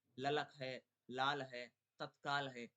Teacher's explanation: जीभ की नोक वत्स को छू करके मार्ग बंद कर देती है, किंतु श्वास वायु की जीभ के एक या दोनों पार्श्वों से निकलती है। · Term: ला ध्वनि